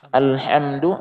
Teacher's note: ha itu kan tengah makhrajnya dia dari tengah tenggorokan ha. Tapi kalau kita turunkan sedikit di bawah di tenggorokan paling bawah menjadi ha.